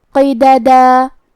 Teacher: آخر میں حرف القاف ہے اور قاف کی ادائیگی زبان کے جڑ اور تالو کے نرم حصے سے ہے. قاف بھی حروف التفخیم میں سے ہے تو ہم یہ حرف کو موٹی آواز میں پڑھیں گے.